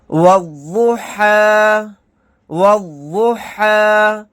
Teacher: والضحیٰ، والضحیٰ، واو ضاد زبر واو، یہ الف اور لام نہیں پڑھے جائیں گے، واو کو ڈائریکٹ ضاد کے ساتھ ملائیں گے۔ واو ضاد زبر واو، ضاد پیش وہ، والضو، حا کھڑا زبر حا، والضحیٰ، یہ یا نہیں پڑھا جائے گا۔